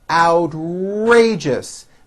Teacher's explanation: Outrageous, 3 syllables. First syllable has the ow sound followed by an R.